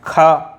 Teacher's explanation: खा थोड़ी प्राण ज़्यादा लग रहा है, इसमें थोड़ी वायु ताकत ज़्यादा लग रही है, तो खा महाप्राण है।